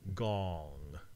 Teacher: It's the back of your tongue touching sort of the roof of your mouth.